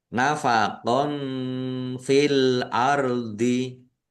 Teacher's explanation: Fathah tanwin bertemu dengan huruf fa. Bacaan ikhfa dibaca samar-samar.